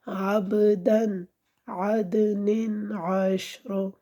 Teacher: جب ہم تینوں کو ملائیں گے تو پھر ہم اس نون تنوین میں غنہ نہیں کریں گے، کیونکہ ہم نے سیکھنا یہ ہے کہ حروف ہلکی آگے آ رہا ہے تو وہاں پہ غنہ ختم ہو جاتا ہے۔ عدن کے اندر بھی غنہ ہم نہیں کریں گے، کیونکہ آگے حروف ہلکی میں سے عین آ رہا ہے